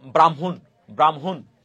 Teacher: হ যোগ ম সেটা উচ্চারণের সময় ম আর হ উচ্চারিত হবে